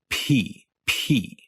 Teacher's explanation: then your lips will pop open with a little p sound then air will start to rush out for a tenth of a second almost making an h sound